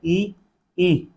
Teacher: ई इसका उच्चारण स्थान किससे होता है तालू से